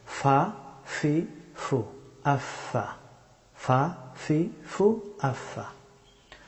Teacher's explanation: ফা হরফটি উচ্চারিত হয় সামনের এই দুই দাঁতের অগ্রভাগ এবং নিচের ঠোঁটের বেজা অংশ থেকে ফা হরফটি উচ্চারিত হয়।